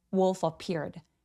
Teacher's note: F가 그 다음 단어 모음과 함께 만나서 wolf appeared 라고 부드럽게 연결해 주세요.